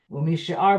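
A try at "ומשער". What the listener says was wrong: Umisha'er. It's not umishar. It's not with an olive. It's with an ayin, so it means misha'er. Misha'er, not mishar.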